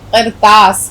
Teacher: قاف کی آواز حلق سے آپ نکالیں گے